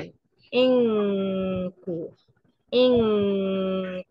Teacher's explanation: بجري الصوت الغنه في مخرج الكاف · بجري صوت الغنة في مخرج الكاف، بجري صوت الغنة بالقرب من مخرج القاف، تمام؟